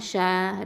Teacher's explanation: ஷீன் அப்படிங்கிறது வசத்துல் லிசான் எழுத்து, நடு நாவு எழுத்து இது.